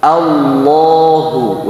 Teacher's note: Nah, a-nya tipis, lamnya tebal. Jadi jangan jangan terpengaruh oleh huruf lam hamzahnya. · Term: lam yang dibaca tafkhim